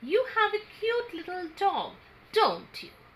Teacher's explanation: so the tag question part will have the falling tone